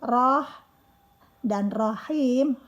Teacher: keluar dari tenggorokan bagian tengah. Dan setiap huruf yang bertasydid itu ditekan.